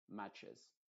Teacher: se agrega entonces una ES y se pronuncia esa E como una I modificada, como una E, matches.